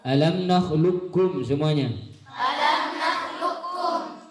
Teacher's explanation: idgham kamil huruf qaf kepada kaf dengan sempurna